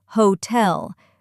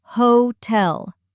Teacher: Some learners say hotel, but in English it's hotel. Stress on the second syllable.